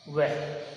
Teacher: दंत और ओष्ठ यानी दांत और होठ दोनों से मिला करके उसका उच्चारण स्थान होता है। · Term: दंतोष्ठ